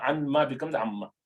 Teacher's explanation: you have noon sakina followed by meme, you merge them together and change this noon into meme. Anma becomes amma.